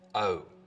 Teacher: starts with the tongue further forwards in the mouth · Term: goat fronting